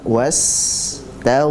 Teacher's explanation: Sinnya dan ghainnya dialirkan, Pak.